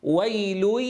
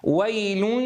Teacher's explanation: ويل هذا صوت للياء صاف، ويل هذا صوت فيه الغنة غالبة بشكل كبير